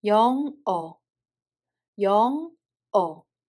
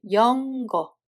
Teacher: There is no [g] sound between.